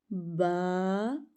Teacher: با، ہونٹ میں لا لینا ہے اور با پڑھ لینا ہے اور ایک الف جتنا لمبا کرنا ہے